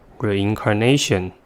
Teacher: the word has five syllables and the stress is at the fourth one